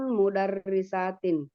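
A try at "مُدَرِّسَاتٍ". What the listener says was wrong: Panjangkan lagi sinnya ya. Karena akan membedakan dengan yang satu. Kalau kita bilang mudarrisatun, sama saja dengan satu. Oke, itu yang membedakan dia panjang pendek. Kalau satu itu pendek, kalau panjang mudarrisatun.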